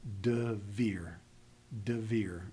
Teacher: I've got a very abrupt transition between the dalet and the bait.